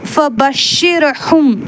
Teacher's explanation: அந்த மீமை வந்து நம்ம மறைச்சு உதடுகள் முழுமையாக ஒட்டாம குன்னாவுடன் ஓத வேண்டும் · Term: இக்பா